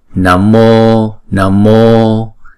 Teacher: Chữ O là diphthong, chúng ta sẽ đọc hai nhịp